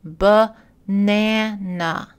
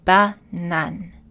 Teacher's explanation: En français, chaque syllabe reçoit la même énergie et donc chaque A est identique.